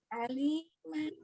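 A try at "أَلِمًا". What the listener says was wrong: Aliman, bukan ali. Dari ali ketika kita menekan tuh ada pergerakan di dada. Itu nggak usah, nggak boleh. Ringan nih, dada ringan. Tapi juga jangan menekannya dengan ke atas. Kalau menekan ke atas maka akan terjadi keluarnya dari al-khaisum, rongga hidup.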